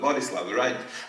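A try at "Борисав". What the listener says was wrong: Borisav without the L.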